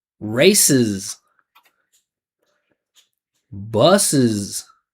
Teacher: you got to make sure when you add the extra syllable it's vibrating as well. So it's is is if you say ss, it's just not going to be effective. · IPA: /ɪz/